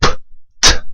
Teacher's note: these sounds are produced in much the same way I'm momentarily stopping air and then releasing it again